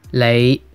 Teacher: In Cantonese, it's 你 with a low rising tone.